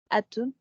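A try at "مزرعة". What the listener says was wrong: Cette lettre-là, je n'ai pas entendu. Ah, oui, en fait ça, ici, c'est la aïn. On ne l'a pas vu, c'est la prochaine lettre qu'on va apprendre, mais c'est la aïn ici.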